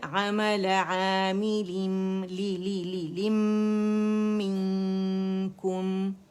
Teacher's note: اچھا, یہاں پہ آپ دیکھیں کہ نون خالی نظر آ رہا ہے نا, عثمانی مصحف میں یوزولی نہیں ہوتا ساکن کا نشان, تو انڈرسٹوڈ ہے کہ نون ساکن ہے, تو نون کے بعد کاف آ رہا ہے, تو یہ حرف اخفا ہے کاف. اب اس کی وجہ سے ہمیں نون کو چھپانا ہے. اب نون سے پہلے کی جو لیٹر, اس کی حرکت کو ہم نے ضرور ادا کرنا ہے. · نون پورے کا پورا میم میں چلے گیا, تو یہاں پہ ہمارے پاس ہو گیا ادغام تام بالغنہ. ٹھیک ہے, تو یہاں پہ ہم کیا کریں گے, دی موسٹ کمپلیٹ لانگسٹ غنہ کریں گے, کامل گریڈ, اکمل گریڈ کا.